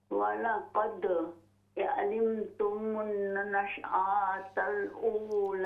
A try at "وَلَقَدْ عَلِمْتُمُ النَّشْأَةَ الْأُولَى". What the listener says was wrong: ہاں جی آ کو ہم لمبا نہیں کریں گے وَلَقَدْ عَلِمْتُمُ النَّشْأَةَ الْأُولَى